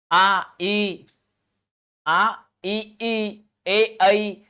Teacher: इनमें होठों की आकृति नहीं बन रही है। होठों की आकृति ज्यों की त्यों बनी हुई है। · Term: अव्रत्त मुखी